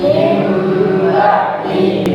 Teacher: Maka cara membacanya adalah bunyi nun sukun ini berupa berubah menjadi huruf mim. Ya, bunyi suara nun sukun atau tanwin bunyinya berubah menjadi huruf mim. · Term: iqlab